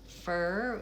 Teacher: it goes from the F directly into the vowel